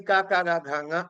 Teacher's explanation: ఆ కాకాగాఘాంగ హ అనే ఈ వర్ణాలు మనకి కంఠస్థానం నుంచి ఉత్పత్తి అవుతున్నాయి